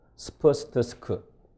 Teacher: 스프스트스크로 시작하면 공명도가 프리커티브에서 스탑으로 떨어지잖아요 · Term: SSP 예외